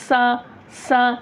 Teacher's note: आमतौर पे क्या है, ज़बान जब निकलती नहीं है, नोक जब टच नहीं होती, तो दोनों दांत मिल जाते हैं, दोनों दांत मिल गए तो सीटी की आवाज़ ऑटोमेटिक आ जाती है। सा ये गलत है।